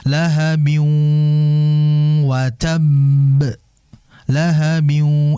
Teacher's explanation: Sehingga dimasukkan ke huruf kedua dengan disertai gunnah. Gunnah tidak sempurna, 50-50 ya kalau bahasa kitanya, yaitu setengah-setengah. Ada yang dari sini, ada yang dari hidung. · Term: idgham bi gunnah